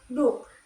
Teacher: Contoh kata bahasa Belanda yaitu zak, kan yang berarti kantong, diucapkan dengan zak dengan velar tidak bersuara, dan doek itu berarti kain dibaca duk dengan deh apikodental bersuara